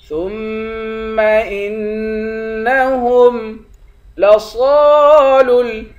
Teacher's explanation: کلا انہم عن ربہم یومئذ لمحجوبون ثم انہم لصالو الجحیم۔ ثم، تا کو میم سے ملا کر میم پر غنہ کریں گے، حمزے کو نون سے ملا کر نون پر بھی غنہ کریں گے